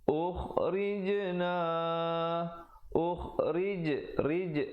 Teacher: ra-nya dibaca nipis dan diberikan pantulan pada jim yang bertanda mati